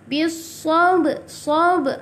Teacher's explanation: Sab ini kena qalqalah sughra. Lantunan dia kecil sahaja.